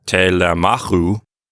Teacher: So it's telemachu. And again, the Omicron upsilon diphthong is long. It makes that last syllable long. And so we pull the accent one syllable to the right.